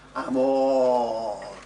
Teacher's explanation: Notice that even when you make it really long, amore, the last syllable's still short, because that's how you speak in Italian.